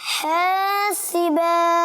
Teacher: حاصبا, صاد کو موٹا کریں گے